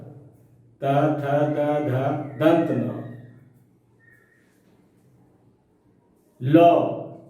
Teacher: ये सभी वर्ण मुख में स्थित जो दांत हैं उसी से उच्चरित होते हैं।